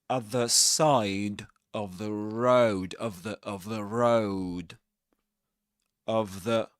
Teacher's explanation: all these are pronounced with schwas that is to say with this very small sound in English